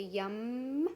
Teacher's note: We put our lips together when we say yum, just like the M. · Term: yummy sound